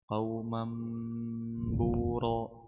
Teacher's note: ميم تنوين بالفتح منقلب لميم المخفى عند الباء المضمومة بغن حركتين